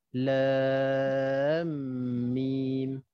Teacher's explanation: Maksudnya antara lam dengan mim tu kita ada dengung. Kita ada masukkan dia, bunyi dia.